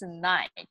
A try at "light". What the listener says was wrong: Try it again because you pronounced it night. That last word is a light.